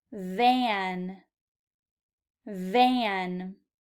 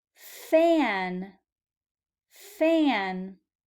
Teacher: Notice how the mouth position is the same. The difference is the voice. V, f. Van, van.